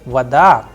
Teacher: But in the word vada it is rising at the end because the udar is on a not on o. So vada and that is why the sound of o is coming like a and I'm pronouncing like vada.